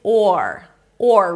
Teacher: The the is the the is [music] the is the see a lot easier is the orange is the orange is the and then we have the first word to add oranges the now the first syllable is or or round your lips for the o make sure that you don't bring the tongue up too soon so it's not orange but or or and from here you move to wrench.